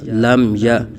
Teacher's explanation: یعنی میم ساکن میں غنہ نہیں کریں گے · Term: اظہار شفوی